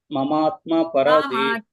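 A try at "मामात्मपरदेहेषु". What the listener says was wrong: ಮಾಮಾತ್ಮ ಅಲ್ಲಿ ಮ ದೀರ್ಘ ಇದೆ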